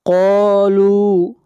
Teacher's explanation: لو کو بھی کھینچ کر پڑھیں گے 1 الف کے برابر، یہ واو مدہ ہے